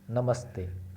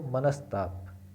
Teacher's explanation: यानी कि दंत्य स, यानी कि दांत पर जब जीभ स्पर्श करती है तो स